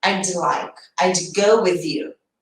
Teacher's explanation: o D tem um som bem sutil, não é aquele D de dado